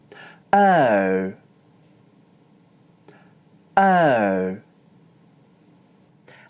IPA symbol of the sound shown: əʊ